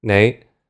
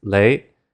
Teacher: the N sound was replaced with an L sound